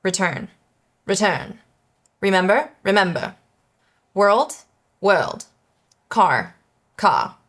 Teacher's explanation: This was a middle ground between British Received Pronunciation and General American. The R was present, you could hear it, but it wasn't as harsh as it may be now. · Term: refined Rs